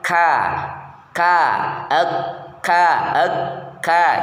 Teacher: tempelkan lidah bagian belakang agak ke tengah dibanding dengan makhraj qof pada langit-langit keras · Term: Kaf, kaf